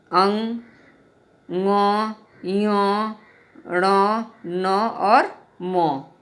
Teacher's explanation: इनका उच्चारण मुख और नासिका से होता है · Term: नासिक्य